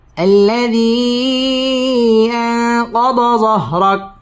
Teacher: الذي মধ্যে মুনফাসিল, 3 আলিফ টান দিয়ে পড়তে হবে।